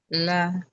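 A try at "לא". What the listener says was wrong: é o O aqui, ó. O Aleph é mudo e é o O aqui, ó. Lo. Só colocar lo.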